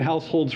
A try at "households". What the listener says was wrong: Put your tongue behind your teeth there, and then you say your S's. with your tongue behind your teeth. He started to lisp a little bit.